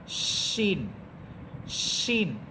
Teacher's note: শিন হরফটার আওয়াজটা অনেক বড় হবে, অনেক বিকটভাবে আওয়াজ হবে এবং শাঁসা একটা শব্দ হবে। শিন, শিন এটা সিনের মতো হবে না।